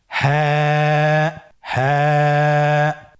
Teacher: হ্যাঁ হরফটি উচ্চারণের স্থান কণ্ঠনালীর শুরু হতে, অথবা আমরা যদি আরবিতে বলি হলকের শুরু হতে এই হরফটি উচ্চারিত হয়।